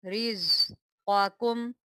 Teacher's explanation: क़ाफ जो है हमेशा इसको हम मोटा करके पढ़ते हैं, यानी कि हम इसको थिक वॉइस में पढ़ेंगे। · ज़ा जो है ये सीटी के साथ पढ़ा जाता है।